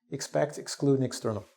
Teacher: The second syllable is stressed.